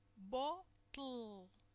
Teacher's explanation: the air will not escape through the center of the mouth, but through the sides. It will escape laterally. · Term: lateral release